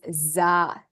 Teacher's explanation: zah the z sound so s becomes Z that's the voice so if you say Z you'll find this vibration in your throat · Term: voice sound